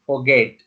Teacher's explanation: A stress is at second syllable.